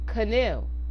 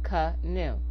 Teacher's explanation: the first A is being reduced to schwa